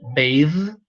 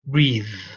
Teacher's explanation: the vowel changes. This is a diphthong, bathe, and this is an E, breathe